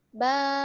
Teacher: Fathah bertemu dengan alif. Nah, di sini ba-nya dipanjangkan. Karena gunanya alif itu untuk pemanjang.